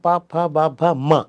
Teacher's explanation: They are బైలేబిల్ ప్లోజివ్స్, అంటే 2 పెదవులు కలిస్తే తప్ప రాదు. ప ఈజ్ వాయిస్లెస్ బైలేబిల్ ప్లోజివ్, బ ఈజ్ వాయిస్లెస్ వాయిస్డ్ బైలేబిల్ ప్లోజివ్.